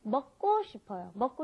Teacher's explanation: when you've got that K, the gyuk, followed by another gyuk, it ends up being a double gyuk most of the time